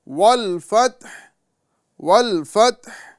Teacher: والفتح والفتح، یہاں پر لوگ جو غلطی کرتے ہیں وہ یہ کہ تا کو متحرک کر دیتے ہیں اور ہا سے ملاتے ہیں، والفتح والفتح اس طرح بولتے ہیں، والفتح والفتح، تو یہ غلط طریقہ ہے۔ صحیح طریقہ یہی ہے کہ ہم تا کو مکمل ساکن کریں اور آخر میں ہا کی آواز کو جاری کر دیں، ہوا جو بیچ والی حلق سے ہا کی آواز ہے اس کو ہم جاری کریں گے، ٹھیک ہے۔ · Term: ہا کی آواز جاری